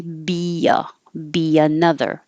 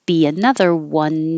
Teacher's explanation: when your tongue goes up very high for the B and comes down for the another, you slide it down and make a Y. Be another.